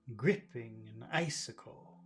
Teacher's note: the accent in icicle it's the first syllable